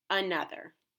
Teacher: Another is a trap word because it has two schwa sounds, each spelled with a different letter.